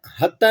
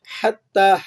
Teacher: ہا کو حلق سے پڑھنا ہے